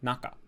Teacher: the first mora is high and then the pitch immediately drops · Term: atamadaka